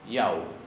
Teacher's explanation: Y la U final es más larga.